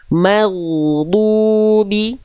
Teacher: di huruf ghain sukun pada kalimat maghdubi jangan sampai terhenti suaranya Bunda. Ghairil maghdubi, ngalir suaranya.